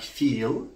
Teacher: If I have a word like feel, then the L here is not a dark L, it's a clear L.